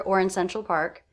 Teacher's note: I noticed I did not reduce the word or